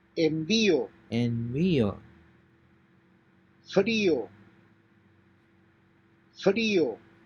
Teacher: Since these words have a written accent over the letter I, the diphthong is broken and the two vowels are pronounced separately.